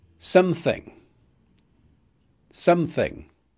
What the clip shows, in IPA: ˈsʌm.θɪŋ